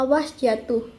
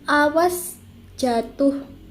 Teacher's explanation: silaba ketua jatuh atau diucapkan pajang pada kedua sila banyak jatuh di dalam tataran kalimat diucapkan panjang pada silaba berakhir bermaksud mencari perhatian atau penyangatan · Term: durasi